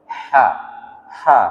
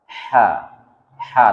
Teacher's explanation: Ha itu hukum makhrajul hurufnya keluar di wasatul halqi, pertengahan kerongkongan, atau di jakun. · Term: ha kecil